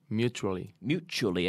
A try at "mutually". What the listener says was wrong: And good pronunciation.